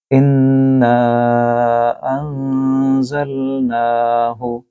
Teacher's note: نون کے اوپر تشدید ہے، اس کو آپ غنہ کریں گے